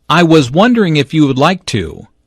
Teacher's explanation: notice how the question goes up at the end which shows that he is not overly confident